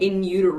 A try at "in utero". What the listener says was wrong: Utero. You're not pronouncing your T's. How can anybody know what you're trying to say if you don't pronounce your T's? Yeah, I'm in Euro. In Euro.